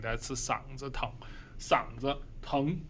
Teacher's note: Make sure this is a neutral tone. 子 is usually a neutral tone.